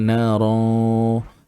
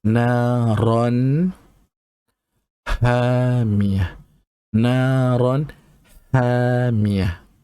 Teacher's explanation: Ra itu fathah tanwin, kita kena baca secara jelas, izhar jelas. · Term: izhar halki